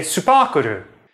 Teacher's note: Between the pairs of consonants, Japanese shoehorns in this extra vowel, u. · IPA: [sɯpɑ:kɯɾɯ]